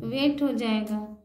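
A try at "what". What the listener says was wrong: एक के बाद जब ई रहता तब ना वेट होता। एक के बाद ई है तो फिर आ पढ़ेंगे।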